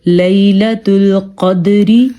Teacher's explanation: ہم نے قاف کو پر پڑھا ہے کیونکہ قاف حروف مستعلیہ میں سے ہے، اور دال پہ ہم نے قلقلہ کیا ہے کیونکہ دال کتب جدن یعنی کہ حروف قلقلہ میں سے ہے۔